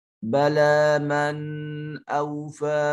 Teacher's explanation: نون ساکن کے بعد حمزہ حرف اظہار میں سے یہاں نون کو ظاہر کر کے پڑھیں گے